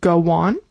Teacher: when you have two vowels together like go on, you might add a w sound